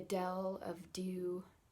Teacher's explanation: the way that you pronounce D, kind of pressing your tongue into the back of your teeth, draws you into whatever word you're saying.